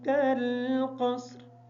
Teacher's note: पहला काफ बारीक पढ़ेंगे, दूसरे काफ को मोटा पढ़ेंगे।